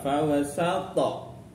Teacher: Fawasatna ada ta sukun di sini qalqalah ya